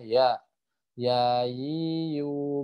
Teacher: Tengah lidah bertemu dengan ee langit-langit atas gitu ya